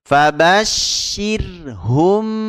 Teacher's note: ketika mim sukun bertemu ba maka ditahan dua harakat fabasirhum ya didengungkan di suara hidung ditahan dua harakat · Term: Ikhfa Syafawi